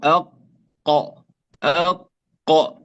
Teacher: القاف تخرج من أقصى اللسان مع ما يحاذيه من الحنك الأعلى، نقول أق. فهي من أقصى اللسان مع ما يحاذيه من الحنك الأعلى بعد مخرج الغين والخاء.